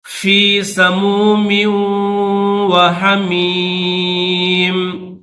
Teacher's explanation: جب وقف کریں گے تو ان دونوں زیروں کو نہیں پڑھیں گے، صرف میم کی آواز پیدا کریں گے